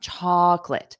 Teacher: notice for the first vowel it's stressed so my mouth opens wide